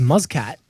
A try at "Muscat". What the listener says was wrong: Muscat. Yeah, it's not Muzz. It's not a Z.